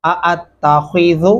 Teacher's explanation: खौ को मोटा और पुर करके पढ़ेंगे